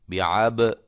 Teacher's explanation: با زیر بی، عین زبر با عب، یہ با کو ہلانا ہے کیونکہ یہ حروف قلقلہ میں سے ہے